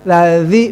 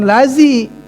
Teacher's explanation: dza itu harus dikeluarkan lidahnya. Kalau tidak dikeluarkan bukannya dza namanya za.